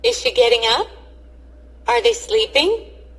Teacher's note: The sound is up, sound is high. If the question starts with is or are. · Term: Rising and Falling Intonation